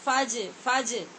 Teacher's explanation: جیم ساکن ہے، مشدد نہیں ہے، لہذا ساکن جیم کے اوپر قلقلہ کریں گے